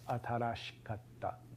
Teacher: there's again the e that's after the sh uh devoices because there's a voiceless sound after it